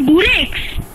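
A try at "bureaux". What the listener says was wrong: No. The X is silent in plural. It should only be written. There is no change. In pronunciation, it will remain the same. So here you are saying buro. Here you will say buro.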